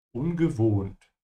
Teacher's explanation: The O here is a bit longer because there's an H after it. Yeah. And as usual, the W is a V.